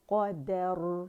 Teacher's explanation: ٹھیک ہے را مخفم ہے, اس کی را ساکن سے پہلے ہمارے پاس فتح آ رہی ہے تو موٹائی سے ہی پڑھیں گے